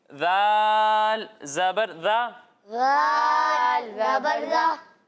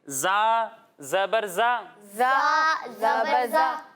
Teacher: जब हम ज़ाल की अदायगी करेंगे तो इसमें सीटी की आवाज़ नहीं आएगी · ज़ौ हुरूफ मुस्ताडिया में से है, यानी उन हुरूफ में से है जिनको मोटा पढ़ना ज़रूरी है